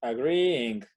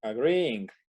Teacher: Se alarga un poco ese sonido de la i. Aparte, la segunda i no es tan i marcada.